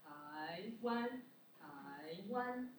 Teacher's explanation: So the length of second tone is longest out of 4 tones.